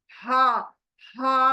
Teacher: जब हा, हा बोलते हैं वो झरने की आवाज होनी चाहिए हलक के अंदर